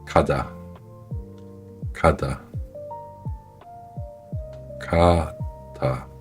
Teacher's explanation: Le Kyok initial est léger entre G et K.